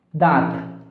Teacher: अनुनासिक के उच्चारण में हवा नाक और मुंह दोनों से निकलती है